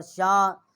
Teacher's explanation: بڑی مد ہے 4 الف جتنا جی ہے ہم نے آواز بلند کی ہے۔ ویسے 5 الف جتنا آواز ہم بلند کر سکتے ہیں، 1 الف جتنا حمزہ کی، اور 4 الف جتنا جو ہے یہ اس مد کی جو ہے آواز ہم نے بلند کر سکتے ہیں۔